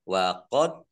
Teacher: Dal sukun bacaan qolqolah dibaca memantul ditampakkan pantulannya